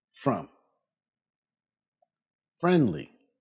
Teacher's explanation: For F, do not use your voice.